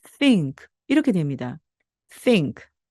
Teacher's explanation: 무성음, 즉 성대가 울리지 않는다는 뜻입니다. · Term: 무성음 TH